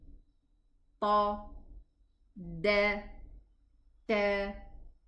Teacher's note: What is their articulation point? They are the tip of the tongue against the roots of the top two incisors. We say ta, da, ta, exactly the same place, but there is a difference in sound between them.